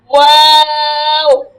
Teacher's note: ওয়া উচ্চারণের সময় ঠোঁটটা পুরা গোল করে তারপর ছেড়ে দিয়ে আবার অফ করতে হবে